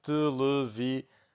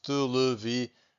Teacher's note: To get these nasal sounds, I'm breathing out using my mouth and also my nose. Televisão. So I can feel my nose vibrating a little bit.